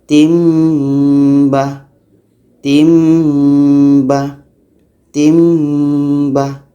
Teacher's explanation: Iklab juga namanya. Jadi di sini kita baca ayatim ba. Timbah. Tanwin hilang tukar kepada mim.